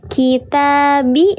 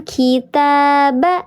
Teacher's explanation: Kitabi sama dengan kitaba, sama-sama dibaca panjang 2 harakat. Maka namanya sama-sama mad asli atau mad tabi'i